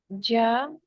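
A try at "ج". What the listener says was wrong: ஜா அல்ல, அது ஜ. ஜவ் அல்ல, ஜவ். ஜவ் நீட்டாம வரணும்.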